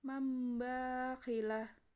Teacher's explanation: lebih mudah caranya membacanya dengan menukar huruf menjadi huruf mim. Huruf iqlab yaitu ba.